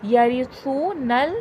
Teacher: یہاں پر سو میں واؤ مدہ ہے، واؤ ساکن سے پہلے پیش ہے، تھوڑا کھینچ کے پڑھا جائے گا